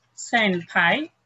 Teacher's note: every time with the N and P, it becomes an M sound